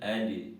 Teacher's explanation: ujung lidah bertemu dengan ujung gigi depan bagian atas